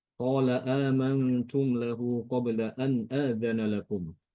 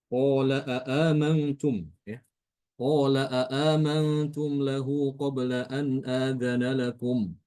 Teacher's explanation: dia membaca dengan menambahkan hamzah lagi. Ada dua hamzah di situ. Membaca dengan dua Hamzah.